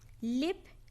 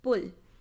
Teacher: Here clear la is occurring in the word initial position, and in this position the dark la cannot occur, and dark la is occurring in the word final position, and this position the clear la cannot occur.